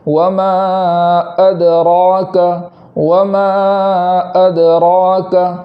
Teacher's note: حمزہ کے بعد دال پر جزم ہونے کی وجہ سے وہاں آواز کو لوٹائیں گے، اور اس کے بعد را جو ہے اس را کو پور پڑھیں گے۔